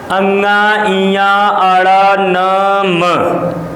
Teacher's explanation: हमारे मुख और नाक पर जो है कि कंपन हो रहा है, और नाक से झन्नाहट की एक जो है कि प्रकंपित ध्वनियाँ निकल रही है, जिसके कारण से इसे अनुनासिक कहा जाता है।